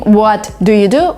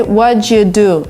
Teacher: Instead of saying what do you do, we say what you do. So there is a sound ch, which appears in the middle.